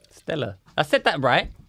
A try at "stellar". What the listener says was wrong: R. There's an R. You said stellar like it's sponsored by Wife Beater Drink. Stellar. Stellar.